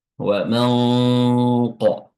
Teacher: Ya, yang tadinya nun itu makhrajnya di ujung lidah ya dan berdengung. Ya, kita pindahkan makhrajnya dari ujung lidah ke pangkal lidah. Aqsal lisan seperti makhraj huruf qof ya. · huruf nun ini samar dengan cara kita meletakkan posisi lidah atau mulut kita pada makhraj huruf setelahnya, yaitu huruf qaf. Ya, yang tadinya nun itu makhrajnya di ujung lidah, ya, dan berdengung. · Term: ikhfa